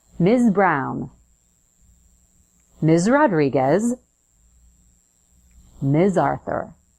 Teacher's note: it's pronounced with a z so Buzz your vocal cords at the end